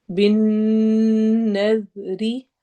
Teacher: بن نظری، بن نون پر غنہ ہوگا، جب بھی نون کے اوپر شد آتی ہے تو ہم نون پر غنہ کر کے یعنی ناک میں آواز لے جا کر پڑھتے ہیں